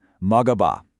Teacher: You have to get the linking sound right. Notice how that last consonant in 먹 just smoothly connects to the next vowel.